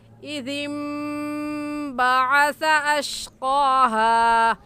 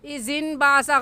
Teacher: کیونکہ قاعدہ یہ ہے کہ نون ساکن کے بعد با آ جائے، نون ساکن یا تنوین کے بعد با آ جائے تو وہ دونوں میم بن جاتے ہیں اور ان پر غنہ بھی ہوتا ہے. تو اس لیے یہاں پر ہم غنہ کریں گے اور نون کی جگہ میم پڑھیں گے، اور یہ لفظ ایسے پڑھا جائے گا اِذِ انبَعَثَ أَشْقَاهَا.